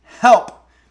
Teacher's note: You have the soft H sound, which is the low end of it, and then the P, which is the plosive.